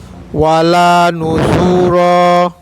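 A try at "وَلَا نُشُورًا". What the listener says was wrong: Syunya panjang Pak. Nusyura.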